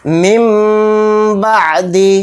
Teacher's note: نون ساکن کی آواز کو میم سے بدل کر غنہ کے ساتھ پڑھیں گے · نون کی آواز نہیں آئے گی